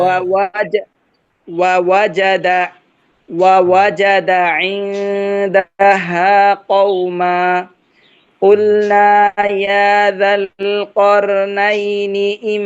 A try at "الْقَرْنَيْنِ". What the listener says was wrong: র মোটা, র মোটা, কর নাইনি, রকে আরো মোটা করেন, قلنا